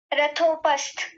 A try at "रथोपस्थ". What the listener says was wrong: पस्थ नहीं, पस्थ, यही गलती की थी आपने, थकार को पूरा रखिए।